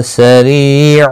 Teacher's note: سریع ریہ مدہ ہے، ایک الف کی مقدار کے برابر کھینچ کر پڑھیں گے